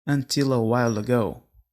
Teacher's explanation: Perceba que praticamente não temos pausa na pronúncia dessa frase.